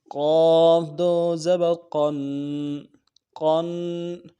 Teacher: قاف کو موٹا کرنا ہے، تنوین ہے غنہ کریں گے